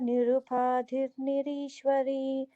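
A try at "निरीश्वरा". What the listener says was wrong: Yeah, so notice the first line ends with Nirishwara. Don't know if you have Nirishwari there. Nirishwara. Nirupadhir Nirishwara.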